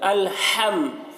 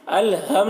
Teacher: ہا کو حلق سے ادا کریں گے